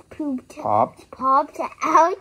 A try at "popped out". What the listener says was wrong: not pooped out. Okay, popped.